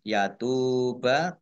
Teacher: Yatuba tak domah wawu sukun mat tobi'i panjang 2 harokat